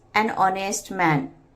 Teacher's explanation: In the word honest man, H is silent. It begins with a vowel sound O.